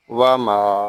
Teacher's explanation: اور وقف بالاسکان۔ واو زبر وا، میم الف زبر ما، وما، یہاں میم کو ہم ایک الف تک کھینچ کر پڑھیں گے کیونکہ یہاں الف مدہ ہو رہا ہے